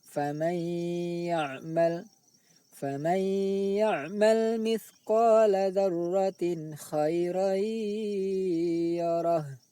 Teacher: Faman ya'mal, nun sukun bertemu ya. Bunyi nun sukun dimasukkan ke dalam bunyi ya sambil didengungkan. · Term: idgham bi ghunnah